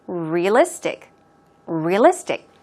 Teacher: the stress goes on the third syllable, on list.